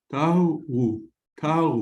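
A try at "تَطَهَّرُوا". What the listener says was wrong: listen, no, it's not a wow, it's a vad. It's tavharu, tavharu. No, tavharu. Can you pronounce the va?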